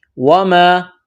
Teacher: الف مدہ ہے، یعنی الف سے پہلے زبر ہے، ایک الف کے برابر کھینچنا ہے